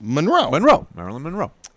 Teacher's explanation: Emphasis on the second syllable.